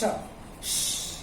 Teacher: यहाँ पे कुछ वाइब्रेट नहीं करता है। ये सिंपली फोर्स है, दोनों दांत के बीच से आप खाली आपको हवा बाहर की तरफ प्रेशर करनी है।